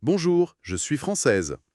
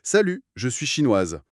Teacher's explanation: Le E final déclenche la consonne, ce qui donne ce fameux son vibrant en Z.